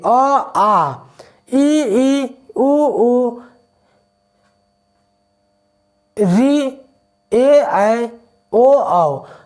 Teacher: देखिए अ आ, ई उ री, ए ऐ, ओ औ। तो इसमें सबसे ज़्यादा हम देख रहे हैं कि मुख आ को बोलने में खुल रहा है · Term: विवृत